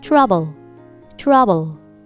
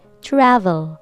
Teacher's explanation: this is b sound lips together trouble trouble but this is v sound okay so you have to touch the upper teeth to your lower lip v sound travel this is travel this is trouble they're not the same